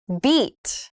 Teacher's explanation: E is more tensed and I is more relaxed. When you say the vowel e like in beat, your tongue is high up and towards the front of your mouth and your lips are stretched out more.